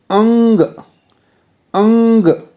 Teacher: इसके उच्चारण के लिए कंठ या गले के साथ-साथ नाक का भी प्रयोग होता है